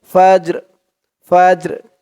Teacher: এই জিমটা কল কলার হরফ ধাক্কা দিয়ে পড়তে হবে